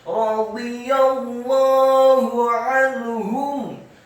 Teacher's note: Lamnya setelah ditasydidkan fathah dua harokat karena harokatnya tegak. Kemudian ha-nya pada kata Allah dibaca tafkhim tebal dan dhammah satu harokat